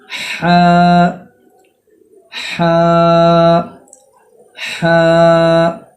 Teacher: بیچ حلق سے ہا ادا ہوتا ہے